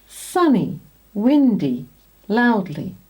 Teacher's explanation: So now most people say /ee/ in these words